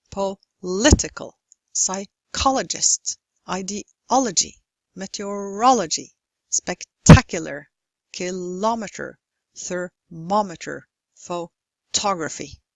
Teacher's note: have stress on the third syllable from the end